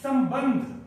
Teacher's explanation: जो अम है अम का जो उच्चारण होता है वो म की तरह होता है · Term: अयोगवाह